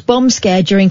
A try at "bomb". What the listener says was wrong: You say bomb like bum.